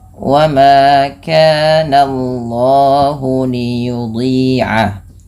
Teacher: Ee jangan menebalkan bunyi suara nanya, tapi ditebalkan bunyi Allahnya sehingga ee apa namanya? Nanya tipis, Allahnya tebal.